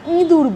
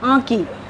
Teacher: কোমল তালু মাঝামাঝি জায়গায় থাকে, না উপরে ওঠে না নিচে নামে, তখন কিছু বাতাস নাক দিয়ে বের হয়, কিছু বাতাস মুখ গহ্বর দিয়ে বের হয়। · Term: আনুনাসিক